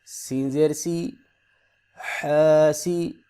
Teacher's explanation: حا کو حلق سے پڑھیں گے، ہا نہیں پڑھیں گے